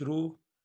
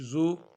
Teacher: او کی آواز پیدا ہوتی ہے، ہونٹوں کو گول کیا جاتا ہے۔ ہر حرف میں، پیش کے ہر حرف میں ہونٹوں کو ہم نے گول کرنا ہے۔